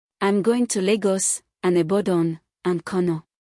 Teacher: rising on each item except the last which is falling to show completion